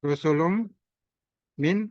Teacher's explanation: Nah ini tanwin bertemu min. Ini sifatnya disebut idgham. Idgham di gunnah. Ini baca dengan dengung.